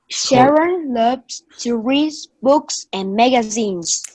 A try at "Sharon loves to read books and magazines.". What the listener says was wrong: So again, we haven't talked about linking consonants yet, but make sure that you still have the read. That D. at the end.